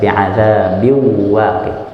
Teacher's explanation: Jadi tanwin dan nun sukunnya seakan-akan nggak dibaca. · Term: Idgham